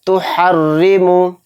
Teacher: را کے نیچے زیر آ رہا ہے تو اس را کو بھی باریک پڑھیں گے، موٹا نہیں پڑھیں گے